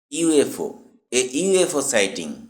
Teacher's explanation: এখানে ইউ শব্দটি ওয়াই দিয়ে শুরু হয়, যা একটি ব্যঞ্জনধ্বনি